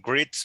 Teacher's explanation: Ahí sí está la S clarita, suelta. No hay zumbido. Greets. Porque la T no emite vibración.